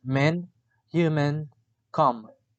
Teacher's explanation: The description of m is voiced bilabial nasal.